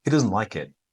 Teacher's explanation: in conversational style, the T becomes so small that it's almost inaudible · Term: the T disappears